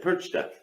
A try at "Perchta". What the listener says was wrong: Yeah, but you don't have the R sound. Percha. Yeah, dad, loser, R sound.